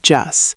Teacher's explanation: The T sound at the end often becomes very light when speaking fast.